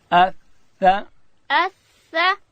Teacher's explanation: په ثا کې به هم ورته ګورو چې ژبه د باندې ډېره راونوځي، داسې به وایو اثا اثا.